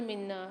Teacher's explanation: نون کے اوپر مشدد ہے، غنہ کر کے پڑھیں گے اور کھینچ کے ہی پڑھیں گے ایک الف کی مقدار